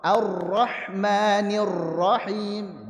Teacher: berlebihan memberikan getaran pada huruf ro